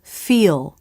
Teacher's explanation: dark l up close and in slow motion the word feel the tongue tip arches in the front for the e vowel watch as the tongue lowers in the back now the tongue